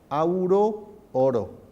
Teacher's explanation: el diptongo más estable es AU, que en español acaba pasando a O